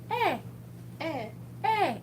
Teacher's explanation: E's make sort of somewhere between an E, like Eh, and A from English, like an ay sound